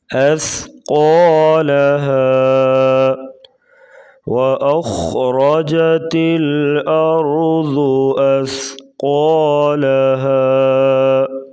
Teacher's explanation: سا کو نرمی سے پڑھیں اور قاف کو پور پڑھیں گے۔